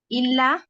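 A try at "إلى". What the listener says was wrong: Ila, not illa. Ila.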